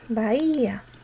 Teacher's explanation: Entonces la que va a tener la fuerza es la cerrada. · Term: hiatos acentuales